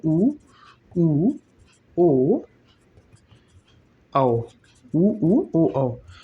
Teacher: ओष्ठ का आकार वृत्ताकार हो रहा है तो वृत्तमुखी हो जाएगा।